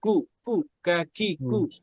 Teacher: জিহ্বার যে গোড়া আছে, এই গোড়া থেকে একটু সামনে এসে উপরে যে শক্ত জায়গা, ওখানে লাগবে